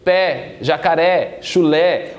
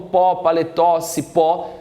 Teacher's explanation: Se terminou em a, e e o e a sílaba tônica for a última da palavra, portanto uma oxítona